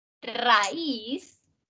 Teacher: raíz es una palabra que tiene una combinación de vocal abierta con cerrada pero la fuerza recae en la cerrada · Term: hiato